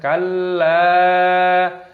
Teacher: berharokat tasdid lamnya, maka diidghamkan, ditekan